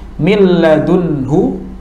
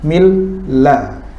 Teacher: ucapkan makhraj lam pertama yang sukun dan juga itu tidak mengangkat atau tidak menurunkan lidah kita, lepaskan lidah kita. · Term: idgham